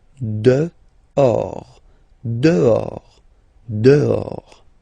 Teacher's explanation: Okay, so remember final S not pronounced, and then this H in French doesn't exist phonetically, so you don't pronounce it